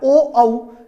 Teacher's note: ओ और औ का उच्चारण स्थान कंठ ओष्ठ होता है